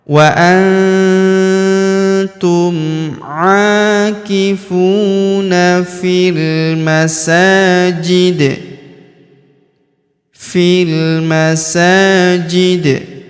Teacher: huruf di di ujung kita sukunkan dan karena dia sukun maka kita pantulkan atau kita qalqalahkan